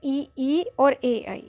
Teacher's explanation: वे स्वर अग्रस्वर कहे जाते हैं, जिन्हें बोलने के लिए जीभ का आगे का हिस्सा प्रयोग होता है